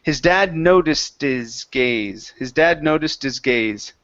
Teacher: so let's get a good uh ed sound here at the end so this will be a t